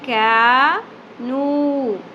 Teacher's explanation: الف حرف مدہ واو حرف مدہ ایک ایک الف کے برابر کھینچنا ہے